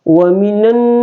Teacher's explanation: nun itu tidak boleh mentasdid ke lam, tapi nun ini langsung dimasukkan ke huruf nun berikutnya ya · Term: alif lam syamsiah